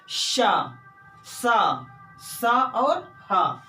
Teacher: ये एक प्रकार की रगड़ या घर्षण से उत्पन्न हुए ऊष्मा से इनका उच्चारण होता है। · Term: ऊष्म व्यंजन